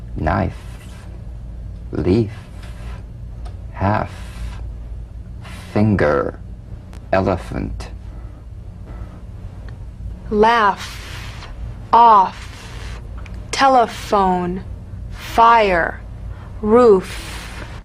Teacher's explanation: the unvoiced fricative labiodental upper teeth to lower lip just like the v